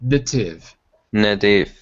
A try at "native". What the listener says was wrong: Careful, not na, but n.